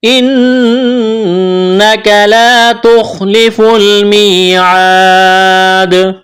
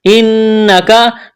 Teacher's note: نون کے اوپر تشدید ہے، نون مشدد ہے تو آواز ناک میں چھپائیں گے، غنہ کریں گے